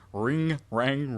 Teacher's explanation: like the N but it's also in the back of the throat like G